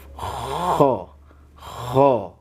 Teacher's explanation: Yang penting ada ihtizaz. Ada gesekan ya. Jadi pangkal lidahnya itu naik kan.